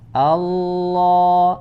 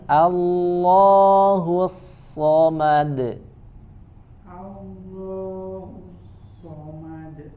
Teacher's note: Allah, A tipis, lamnya tebal.